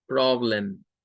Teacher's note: prob, es la sílaba tónica, y lem es donde aparece el schwa. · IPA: /ə/